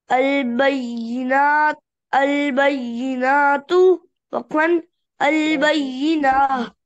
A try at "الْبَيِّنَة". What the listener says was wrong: البينة البينة खींच के नहीं पढ़ना.